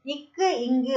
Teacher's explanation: நாவோட முதற் பகுதி அன்னத்தின் அடிப்பகுதியை பொருந்துவதால பிறக்குது